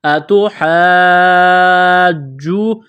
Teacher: یہ لمبی مد ہے، 4 الف کے برابر کھینچنا ہے